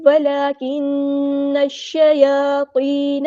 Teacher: نون کو ہم نے شین کے ساتھ ملا دینا ہے، حمزۃ الوصل ہمارا ڈراپ ہو جائے گا، اور لام یہاں پر لام شمسی ہے، اس کو ظاہر نہیں کرنا، یا پہ کھڑا زبر ہے تو مد اصلی کریں گے، تو ہمارا ہیوی لیٹر ہے، پورا ادا کریں گے، یا مد آ گئی ہے تو مد اصلی کریں گے، نون کی زبر کو ہم لمبا نہیں کریں گے۔